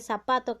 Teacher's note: el zapato que se escribe con zeta lo pronunciamos como si fuera una s · Pero aquí en cuanto a lo que es Perú, no se diferencia mucho lo que es la letra Z al pronunciarlo, ya que zapato, que se escribe con Z, lo pronunciamos como si fuera una S